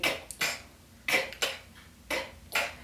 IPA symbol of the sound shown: k